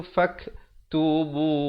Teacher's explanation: Di sini tanwin bertemu fa, ikhfa 2 harakat. Fak ada hamasnya, bunyi angin tu faktubuh. Dan diwakafkan dengan ha, diberikan tanda mati.